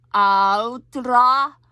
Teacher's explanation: It's almost like a little bit of a D in there. It's a combination between a T and a D, so it's not really altra, because that would be two T's.